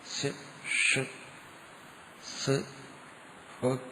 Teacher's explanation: നാക്കിന് മറ്റ് സ്ഥാനങ്ങളുമായിട്ടുള്ള ഘർഷണം കൂടുതൽ സംഭവിക്കും മറ്റു വർണ്ണങ്ങളെക്കാളും. കാരണം ഷ് അങ്ങനെ വരുന്നെങ്കിൽ ശബ്ദം കൂടുതൽ ശക്തിയായിട്ട് പുറത്തേക്ക്, വായു പുറത്തേക്ക് പോകും.